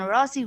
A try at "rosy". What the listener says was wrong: Rosy. it's a bit longer sound. Rosy. Rose is a short sound,